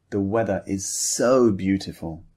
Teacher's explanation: Don't just say, the weather is so beautiful in a flat tone. Emphasize the word so.